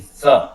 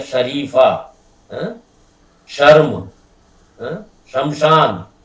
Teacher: जीव जो है वो तालू से टकरानी चाहिए। जीव जो है, जो पहले वाले सा के अंदर जीव दांत से टकरा रही थी, स, और जो तालवी शा है उसके अंदर जीव तालू से टकरानी चाहिए, नहीं तो उसका उच्चारण शुद्ध नहीं निकलेगा।